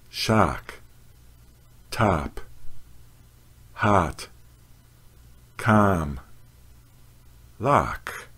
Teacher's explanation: the mouth is wide open the lips are unrounded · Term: honest father vowel